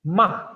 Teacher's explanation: the last and the fourth character is ma at the falling tone